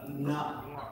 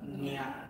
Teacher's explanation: that Na has to come from the throat and Nya has to come from the palate